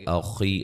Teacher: خا کو موٹا یا مدہ ہے